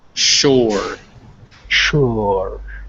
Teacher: the mouth but with your lips rounded like an ooh so it's between ooh and ah